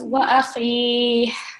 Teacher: the ha with kasra is being replaced by ha sakin